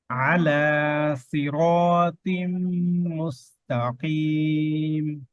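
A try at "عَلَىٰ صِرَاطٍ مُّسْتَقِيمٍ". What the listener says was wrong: আচ্ছা সিন আর সদ লেটার ভিন্ন আওয়াজ ভিন্ন, হ্যাঁ আওয়াজটা মোটা। এই সদের মধ্যে ইস্তেআলা, সদ হচ্ছে ইস্তেআলা হরফ, মোটা হরফ।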